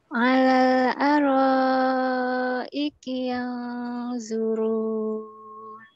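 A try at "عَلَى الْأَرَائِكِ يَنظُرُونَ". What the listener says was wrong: Bukan zuru, zu. Ujung lidahnya dikit digigit, kemudian tebalkan. Zuru.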